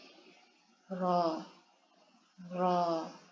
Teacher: ро әрпі о мен аның ортасында айтылады. Толықтай ро емес.